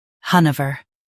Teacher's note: Han uh vuh Hanover Han uh vuh Hanover In US, stress Han and say over. In UK, keep vuh softer.